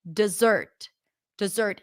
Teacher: Stress is on the second syllable. Now, some people might even pronounce the first syllable with a schwa.